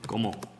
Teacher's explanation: It might sound like the Spanish como, but this one is more nasalized.